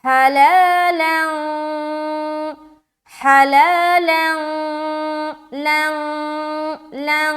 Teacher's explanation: نون کی آواز کو چھپاتے ہیں. تو گویا یہ معلوم ہوگا کہ ناک سے آپ پڑھ رہے ہیں